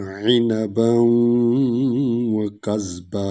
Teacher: وعنبا اصل میں تو عنبن، لیکن وہاں پر شد ہے، اس کو اس میں ادغام کر رہے ہیں